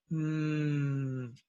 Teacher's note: now we have the nasal mmm with the labial